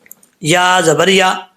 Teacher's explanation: یا زبان کا درمیان اوپر والے تالو سے لگے تو یا پڑھا جاتا ہے، ٹھیک ہے. یا اس کو سختی سے پڑھیں گے تو یہ آواز نکلے گی.